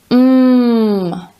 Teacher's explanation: my lips are together when i make this sound and i can feel a vibration on my throat